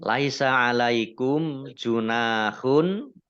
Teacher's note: mim sukun bertemu dengan huruf jim, bacaan idhar syafawi, dibaca jelas